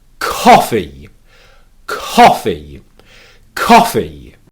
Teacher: take your hand and you put it on your throat and you make sure there are no vibrations when you pronounce the k sound · whisper the k sound at the beginning of the word without adding an extra syllable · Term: British p t or k